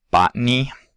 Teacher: you can release that T directly into a nasal. so that the released air goes out through the nasal cavity.